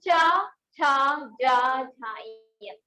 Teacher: ये हमारा बोलते हैं मुख के तालु जो भाग होता है उससे बोलते